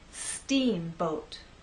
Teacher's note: we also need to make that first part longer, and then the second part will be shorter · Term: stressed part